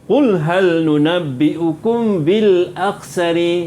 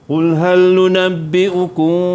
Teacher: bacaannya mesti dengung dengan kadar 2 harakat. Dan bibir atas bibir bawah agak-agak bersentuh je. Bibir atas dengan bibir bawah, jangan tutup rapat, jangan buka luas. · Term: ikhfa syafawi